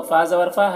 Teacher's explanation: نون مشدد ہے یہاں پر تو غنہ ہوگا